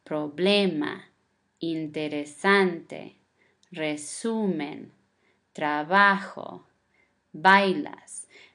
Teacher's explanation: The stress of the word is the second syllable from the end.